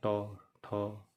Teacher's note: ट जब बोले देखिए आपका जीभ मुड़ता है कैसा, ट ठ है, मूर्धन्य हो गया।